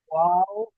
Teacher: দুটো ঠোঁটের দুই সাইড মিলে যাবে, মাঝখান খালি থাকবে।